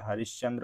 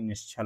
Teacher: विसर्ग के बाद यदि च या छ वर्ण आते हैं तो उसके तालव्य स में आधे तालव्य स में इसका परिवर्तन हो जाता है